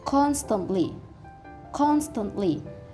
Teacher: the stress is located on the first syllable